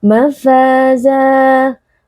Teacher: ada Alif yang sebelumnya berharakat fathah dibaca panjang dua harakat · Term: Mad thii